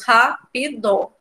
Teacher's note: o Ra é a sílaba mais forte